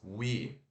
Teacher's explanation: o som de w aqui aquele u de uva que é rapidinho